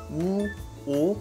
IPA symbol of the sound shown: wɔ́ː